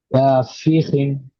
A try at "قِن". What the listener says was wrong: خی نہیں، خی نہیں، قوف کا مخرج کیا ہے، زبان کا پچھلا حصہ اوپر لگے گا، قوف دو زیر